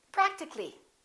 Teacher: we drop the a and we say practically